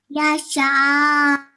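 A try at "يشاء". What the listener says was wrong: So a slight, we have to make the sound of the hamza at the end slightly, okay? So one more time, just listen really carefully, okay? Listen carefully to the end sound that I make, okay?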